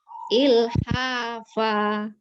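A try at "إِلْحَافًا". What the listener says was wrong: Hati-hati ya, cenderung kependekan nih yang akhirannya. Ilhafa. Ingat, 2 harokatnya berarti ilhaha, panjang hak berapa ya, fa-nya sama.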